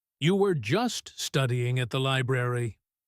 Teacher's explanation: his voice drops low and he stretches out the word just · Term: dropping stretched out echo